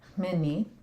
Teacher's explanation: I do like to get that voiceless nasal start.